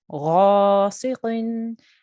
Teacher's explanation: So make your mouth round, غاسق, and your qaf here again is thick qaf. Okay, so even though it's got kasra underneath, you still need to try and make a round mouth and a thick sound when you're saying it.